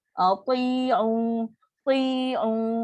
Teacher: Sedangkan u ni 2 harakat mad asli.